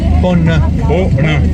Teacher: Aná es nasal al final.